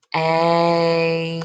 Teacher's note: Typically, when they hear that TR at the beginning, train, it sounds like a CH